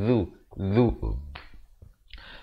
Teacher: Zal beri dhammah di hujung lidah keluar di antara 2 gigi